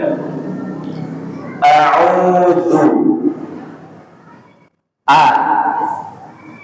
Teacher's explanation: ain itu keluarnya di mana tenggorokan bagian tengah